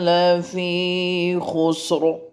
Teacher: اگر وقف کرنا ہے تو را کو پر پڑھا جائے گا کیونکہ اس کے پیچھے یہاں پیش ہے